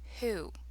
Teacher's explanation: this says the h sound it's like the w is not there